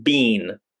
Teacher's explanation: The second word, bean, we have to extend the sound because we have two vowels, almost like we're smiling.